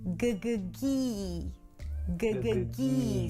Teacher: So the tongue pulls back for the g and then forward for the high E.